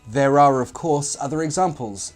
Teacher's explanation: See, I intruded an R sound in that sentence without you even knowing it.